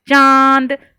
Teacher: अब देखिए, अब आप बोलिए चांद, और फिर अपने हाथ को लगाइए अपने मुंह के पास, चांद, तो माँ से भी, मुंह से भी निकलती है और नाक से भी निकलती है। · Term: अनुनासिक